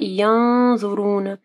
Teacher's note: نون ساکن کے بعد ضا ہے، ٹھیک ہے، تو یہاں پہ اخفا غنہ ہوگا، اور ضا کیونکہ موٹا حرف ہے تو موٹا غنہ ہوگا، ٹھیک ہے، غنہ کو ہم لوگ موٹا کریں گے۔